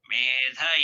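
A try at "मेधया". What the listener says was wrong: No, me anudata. Medhaya. Dhaya is udata.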